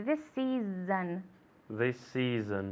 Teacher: There we have the S and the S this season. We link the sound, same consonant to same consonant sound.